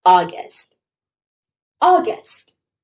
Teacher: In the beginning, we have that short lazy sound. There is no u sound in this word. It's not August, but August. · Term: schwa sound